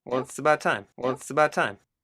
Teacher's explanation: A stop T, because the next sound is a consonant.